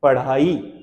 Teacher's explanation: जीभ अचानक ऊपर गई, करंट की तरह वापस आ गई, ऊपरी मसूरे से टकरा करके, मूर्धन्य से टकरा करके अचानक वापस आई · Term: उच्छिप्त व्यंजन